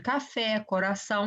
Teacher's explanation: oxítonas aquelas a cuja a sílaba tônica ela vai estar mais forte na última sílaba